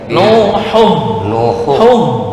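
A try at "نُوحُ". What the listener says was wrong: Belum masuk ke apa sih tenggorokan bawah.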